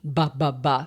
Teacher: your lips do the exact same movement. You just turn your voice on or off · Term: Voiced and voiceless cognates